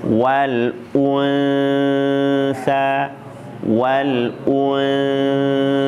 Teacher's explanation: u-nya monyong, nun-nya enggak monyong. Jangan monyong terus.